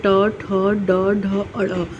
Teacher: ट वर्ग जो होता है, ट, ठ, ड, ढ, अ, ये मूर्धा से निकलता है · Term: मूर्धन्य ध्वनियों